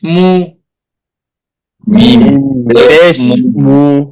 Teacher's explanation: এই পেশ উচ্চারণের সময় ঠোঁট গোল হবে এর প্রতিটা হরফেই